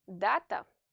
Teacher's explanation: the first A is stressed. Therefore, you have to stretch its pronunciation, say it louder and more clearly than the other A.